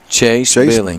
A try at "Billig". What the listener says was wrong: Billig. Not Billing, Billig. B-I-L-L-I-G. Billig.